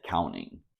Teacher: the T after an N is often silent